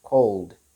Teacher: there is no sound in between the l and the d sound